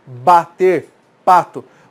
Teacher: você não consegue falar pato sem fechar os lábios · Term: consoante oclusiva bilabial